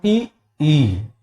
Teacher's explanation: बड़ी ई का उच्चारण तालू से करते